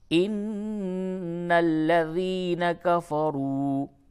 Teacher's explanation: ان الذین کفروا، کفروا را کو پر بھی کریں گے، اور واو مدہ ہے، تھوڑا سا کھینچ کر کے پڑھیں گے، نون مشدد ہے، غنہ کریں گے۔ · لفظ اللہ کے لام سے قبل زیر ہے، باریک پڑھیں گے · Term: لام کو باریک